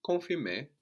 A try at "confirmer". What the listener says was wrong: And we don't, again, really hear that N, no? Confirmer. I think you arrive too much in the N. So just think it, but don't pronounce it.